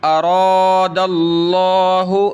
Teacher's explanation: لفظ اللہ سے پہلے زبر، لفظ اللہ کو موٹا کریں گے. اراد اللہ، اور را کو بھی موٹا کریں گے، ارا نہیں پڑھیں گے.